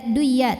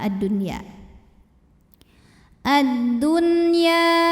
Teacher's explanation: nun sukun menghadapi huruf ya dalam satu kata yaitu kata add-dunya maka nunnya kita bunyikan tetap jelas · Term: izhar wajib